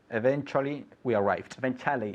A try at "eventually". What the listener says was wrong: Eventually. la U se olvida. Eventually we arrived.